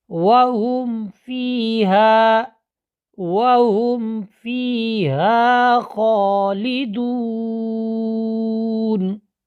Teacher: پہلے قاعدہ پڑھ لیتے ہیں کہ میم ساکن کے بعد با، میم اور الف کے علاوہ باقی 26 حروف میں سے کوئی حرف آ جائے تو میم کو اپنے مخرج سے واضح کر کے پڑھیں گے، ظاہر کر کے پڑھیں گے